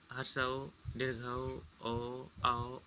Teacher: जिन स्वरों के उच्चारण में होठ है वृत्तमुखी हो जाता है, मतलब गोलाकार हो जाता है, उसे वृत्तमुखी कहते हैं।